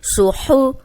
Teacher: صاد موٹا ہے, سیٹی والا بھی ہے, ہا حروف ہلکی ہے